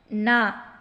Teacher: நாவின் நுனி மேல்வாய் அன்னத்தின் நடுப்பகுதியை தொடுவதால் பிறக்கும் எழுத்து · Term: மூணு சுழி நா